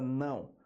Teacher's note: palavra não a letra é o mas o som é de U